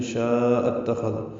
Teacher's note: مد متصل کو چار حرکات سے زیادہ لمبا کریں گے، حمزہ کو اتخذ کی تا سے ملا دیں گے، خوا پر پڑھیں گے، دال نرمی سے پڑھیں گے.